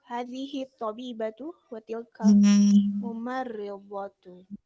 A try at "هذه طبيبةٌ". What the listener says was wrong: Yeah, so did you pronounce the tanween on the end? Yes, so make sure, did you pronounce the tanween on the end? So did you say هذه طبيبة وتلك ممرضة?